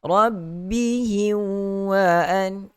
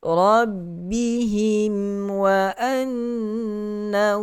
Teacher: Kalau idgham, rabbihim wa an, itu idgham. Mati, mim mati, kena matikan, tutup mulut bagi rapat huruf mim. Rabbihim wa annahum, nun syaddah. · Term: izhar syafawi